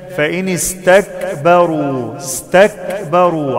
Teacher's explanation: فإن استكبروا عندي همس في الكاف